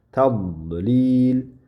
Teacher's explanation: Til yuqori tishlarga, yuqoriga, tepa tishlarga ikki tarafiga yoyiladi va havo tilni usti qismidan keladi. Va tilni uchi mana bu yuqori tishni orqa qismiga tegadi. Ya'ni havoni yopadi. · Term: dot harfi